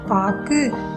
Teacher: அதாவது சொல்லின் முதலிலும் இடையிலும் வரும் பொழுது முழுமையாக ஒலிக்கிறது, அது ஒரு மாத்திரை. ஆனால் சொல்லின் இறுதியில் வரும் பொழுது ஒரு மாத்திரை அளவிலிருந்து குறைந்து அரை மாத்திரையாக ஒலிக்கிறது.